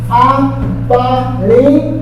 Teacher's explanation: Esse I é fraco, o A é forte.